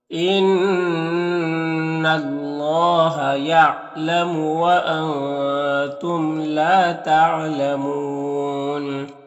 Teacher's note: ان اللہ، نون مشدد ہے تو غنہ ہوگا، نون کی آواز کو ناک میں گنگنائیں گے، 1 الف کی مقدار۔ یہاں پر اللہ کے لام سے پہلے نون کے اوپر زبر ہے تو اللہ کے لام کو پر پڑھیں گے، اور یہاں پر نون ساکن کے بعد تا ہے حروف اخفا میں سے تو نون میں اخفا ہوگا، اور یہاں پر میم میں اظہار شفوی ہوگا۔ · واو مدہ ہے تو وقف کریں گے تو مد عارض وقفی ہوگا